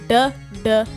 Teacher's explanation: it's pronounced like a D with the flick of the tongue